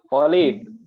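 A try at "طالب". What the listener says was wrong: Nah, tonya panjang. Tolibun. Nanti akan ada bab khusus istilahnya stressing ya. Kalau nggak salah sempat dijelaskan kemarin, ketika ada kata yang pada suatu kata terdapat huruf yang panjang atau di tajwid itu matobi'i gitu ya, maka dia ditekenin di situ tolib gitu.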